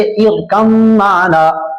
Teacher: آپ با کو میم سے بدل کر صرف میم پڑھ رہے ہیں، با کی کوئی صفت اس میں باقی نہیں ہے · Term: ادغام تام